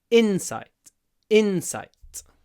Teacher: longer than the second syllable Insight Insight especially because in sight the I is clipped before the T at the end